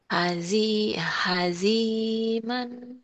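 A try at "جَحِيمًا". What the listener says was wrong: Terbalik. Jahiman. Itu jim ya.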